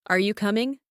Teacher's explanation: rising intonation for yes no questions